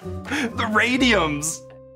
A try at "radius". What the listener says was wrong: Radius. Did you just say radiums?